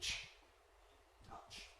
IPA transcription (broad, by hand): ʧ